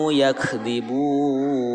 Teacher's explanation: cara membacanya mad adli sukun bisa dibaca 2 harokat, 4 harokat, dan 6 harokat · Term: mad arid li sukun